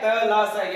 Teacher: त ला स, यानी ते वर्ग ले और से ये दंत में आता है, यानी दांतों से उच्चारण होता है